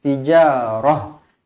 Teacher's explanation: Kalau dia ta bulat macam ni, ta marbutah. Okey, huruf ta marbutah kalau kita berhenti dia akan jadi huruf ha yang berbaris mati.